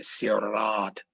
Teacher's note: To say R, your tongue has to go up to the top palate and it creates a trill, a rotating type of sound, which you can consider to be electric, right?